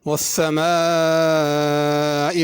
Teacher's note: والسماء میں سین ہے، اس کو سا نہیں پڑھنا، نہ صاد پڑھنا ہے۔ والسماء پہ مد ہے، اس کو کھینچنا ہے۔